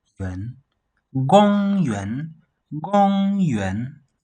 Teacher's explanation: The third tone, remember the third tone is falling, then rising a bit